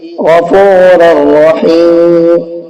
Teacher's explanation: را کو را میں ملائیں گے تو نون کی آواز نہیں نکلے گی یہاں تنوین میں، بلکہ را کی آواز نکلے گی، کیونکہ را کو را میں ملا کر کے ہم نے کیا کر دیا، ادغام کر دیا ہے۔